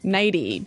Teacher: You make the t a d.